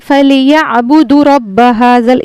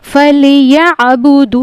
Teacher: पर अक्सर ख्वातीन गलती करती हैं इसको जल्दी पढ़ लेती हैं यहां पे वाओ मदद्दा है इसको खींचना है एक अलिफ के बराबर · اب یہاں پر اکثر خواتین غلطی کرتی ہیں، اس کو جلدی پڑھ لیتی ہیں، یہاں پہ واو مدہ ہے، اس کو کھینچنا ہے ایک الف کے برابر